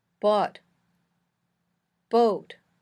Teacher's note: stays in that same spot in the back of your mouth when you say o your tongue moves up higher in your mouth and your lips become more round